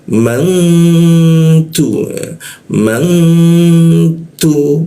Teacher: Kita dengungkan, kita tahan dengungnya, dua ketukannya